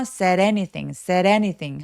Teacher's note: Said anything 할 때도 요 D가 모음사에 끼어서 said anything 하면서 굴러가는 소리가 납니다